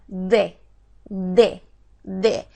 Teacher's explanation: la d es mediante oclusión del flujo de del aire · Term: oclusiva